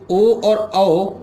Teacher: ओ और औ इनका उच्चारण स्थान होता है कंठ ओष्ठ